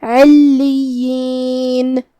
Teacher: کلمت علیین میں یہاں حرف العین ہے، عین کی ادائیگی حلق کے درمیان والے حصے سے ہے، جو کہ اس کے نیچے زیر ہے تو ہمیں عین کو زیر سے پڑھنا ہے اور اسے ظاہر کرنا ہے. · لام پہ تشدید ہے تو 2 حرف کے برابر ہمیں لام کو پڑھنا ہے